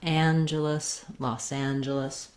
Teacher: you want your length and your clear a vowel on the and syllable it's like the name anne you can think of that vowel